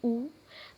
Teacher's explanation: जब आप ऊ और बड़ा ऊ बोलते हैं तो होठ का उच्चारण होता है। जैसे देखिए आप ऊ बोलिए ऊ, तो आपका होठ क्या हो रहा है, सर्कल शेप में बन जा रहा है।